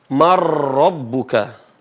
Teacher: Memasukkan huruf yang sukun ini ke huruf yang berharakat. Jadi dibacanya seolah-olah tidak ada nun. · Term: idgham